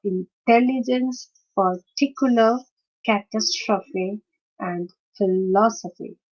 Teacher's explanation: the stress is on the second syllable of the four-syllabic word